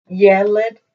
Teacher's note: when you have this eh sound in the vowels, Yelet, then it's going to have the accent at the beginning